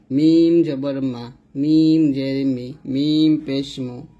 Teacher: দুই ঠোঁটের শুকনা জায়গা হতে আমরা উচ্চারণ করব, মিম এরকম।